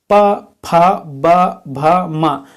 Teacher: यह आपके ओठ को स्पर्श करते है दोनों ओठ को स्पर्श करता है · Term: ओव्य व्यंजन, ओष्ठव्य व्यंजन